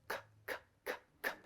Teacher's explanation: Make a k sound. You can feel the back of the tongue go up to the velum or soft palate.